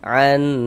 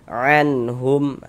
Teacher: Kemudian pendek, dia tidak didengungkan. Sudah dibaca jelas dan pendek dan tidak berdengung, pendek saja. Anhum, jangan dibaca an, jangan, tapi dibaca pendek saja. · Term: izhar halqi